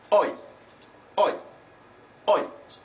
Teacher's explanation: You find that the lips will spread at the end, but at the beginning you have rounded lips. So it is one of the rounded vowel sounds. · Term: diphthong number 17